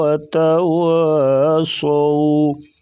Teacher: صو جو صاد ہے اس کو پر پڑھیں گے، واو جو ہے لین ہے اس کو نرمی کے ساتھ ادا کریں گے